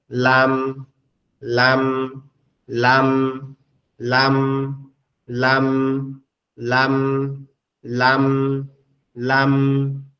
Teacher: জিহ্বার আগা সামনের উপরের 2 দাঁতের মাড়ির সঙ্গে লাগবে, অর্থাৎ সামনের উপরের এই সাইডের মাড়ির সঙ্গে লাগবে, লেগে উচ্চারণ হবে লাম লাম লাম লাম লাম লাম লাম লাম।